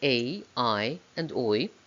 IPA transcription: eɪ,aɪ,ɔɪ,əʊ,aʊ